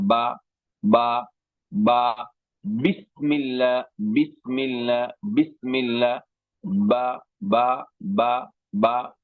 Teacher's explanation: با کا مخرج دونوں ہونٹوں کی تری والا حصہ، دونوں ہونٹوں کی تری والے حصے سے با